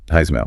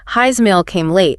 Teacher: A word ends in S, like his, and the next word starts with a vowel, like his email. That S sound often gets voiced. It vibrates so it sounds more like a Z. So his email sounds like Heismail pretty much. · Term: linking with a Z sound